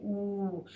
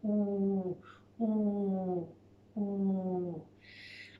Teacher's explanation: It's almost pinching forwards. My lips are forwards, making a nice little circly type shape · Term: ooh sound